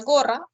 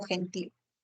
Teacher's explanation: Por ejemplo, tienes la letra G que puede representar al fonema oclusivo velar sonoro o la fricativa velar sorda